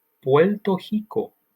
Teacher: the second r at the beginning of rico is actually hiko